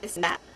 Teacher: Dutch people typically replace TH with a D sound